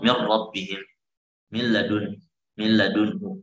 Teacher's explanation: idghamkanlah di lam dan ra, la bi gunnah, tanpa ada gunnah